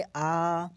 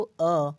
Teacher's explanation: अर्धविवरित जो होगा ना, वो जैसे ये अ है ना, तो वो उसको उच्चारण करके देखो अ, तो इसमें आपका ओंठ जो है वो पूरी तरह से गोला नहीं बन रहा है, थोड़ा सा चपटा बन रहा है, मतलब हाफ गोला बन रहा है।